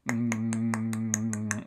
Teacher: put this click in between two pulmonic aggressive sounds is that by making sort of a nasal sound for this velar stop um they can keep that pulmonic egressive airflow going while they sort of superimpose clicks on top of that